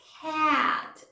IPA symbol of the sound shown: æ